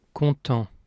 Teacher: when spoken, it ends with a nasal vowel. content, The final T is silent, like most final consonants in French, the exceptions being the consonants in the word careful, C, R, F, and L.